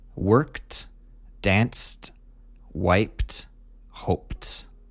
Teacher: wiped and hoped ended with a P sound and so they all get a T ending